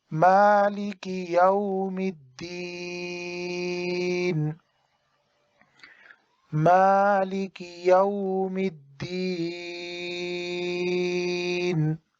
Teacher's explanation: تو جب ہم وقف کریں گے تو نون پر جزم آ جائے گی اور یا کو پھر 3 الف کے برابر لمبا کریں گے